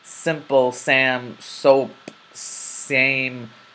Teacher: the letter seen is characterized by your tongue remaining behind your teeth and you making a slight whistling sound